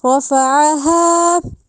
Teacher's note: اب جو را ہے رافع کی وہ جو ہے ہم نے اس کو موٹا کر کے پڑھنا ہے، رافع نہیں کہا جائے گا، را، ٹھیک ہے.